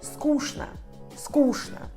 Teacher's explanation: Outra palavra é скучно, скучно, chato. Sílaba tônica é sku, então o último O se lê como A e tchn se lê como shn.